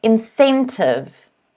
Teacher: word is incentive so that c is a s sound incentive the stress is on the second syllable